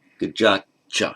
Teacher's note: where you have a word ending in a T, as here gajat, followed by a ch, that t assimilates to the ch, so it becomes gajat cha.